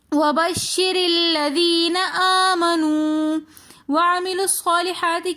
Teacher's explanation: آمنو میں الف کے اوپر کھڑا زبر ہونے کی وجہ سے ہم اس کو کھینچ کر پڑھ رہے ہیں۔ منو میں واو مدہ ہونے کی وجہ سے بھی واو کو کھینچ کر پڑھیں گے